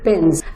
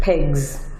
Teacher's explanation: We say Z after the voiced consonant B, D, G, L, M, N, R, U, and so on.